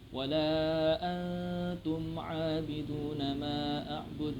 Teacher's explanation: di situ ada huruf nun mati bertemu huruf ta. Antum dibaca samar. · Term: ikhfa